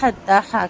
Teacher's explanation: حتی حلق کے درمیانی حصے سے، اور تا کا کھڑا زبر دو حرکت لمبا۔